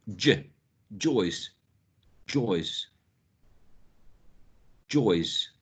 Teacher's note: the front part of the tongue is in the palate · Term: post alveolar sound